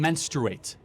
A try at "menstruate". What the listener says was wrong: Okay, because you're saying mensurate, and it's like kind of a little.